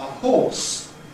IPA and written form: hɔːs (horse)